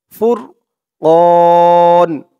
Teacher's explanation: ওয়ানজালাল ফুরকান, ফুরকান, ক বলে 3 আলিফ টান দিয়ে এই নুনকে ধরবে, নুনের উপরে জবরটা সাকিন হয়ে যাবে। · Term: মধ্যে আরসি 3 আলিফ টান